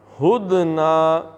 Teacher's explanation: دال کا قلقلہ اور ہا سینے سے